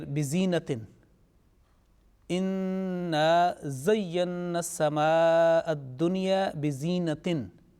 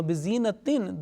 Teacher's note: bizinatin, this tanween is also producing a mute nasal sound. Now, in this case, if this smaller noon is not placed and you do not know the rule, you cannot join with the next word, al-kawakib.